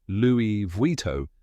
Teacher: in France native speakers often dro the Final End sound slightly so you might hear it as Louie Vito with a subtle nasal sound at the end